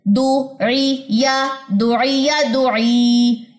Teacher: یا مدہ, تو اس لیے اس کو 2 کاؤنٹس میں نے لمبا کیا ہے